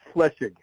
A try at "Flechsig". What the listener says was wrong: Flechsig. I'm trying to put that S in there, so that's the problem. Flechsig.